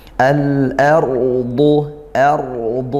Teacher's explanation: ro sukun didahului fathah. Maka rnya tafkhim ditebalkan